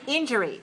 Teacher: pronounce three syllables stress the first